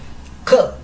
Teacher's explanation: Y esta K realmente igual se dice K, pero se dice con más expulsión de aire.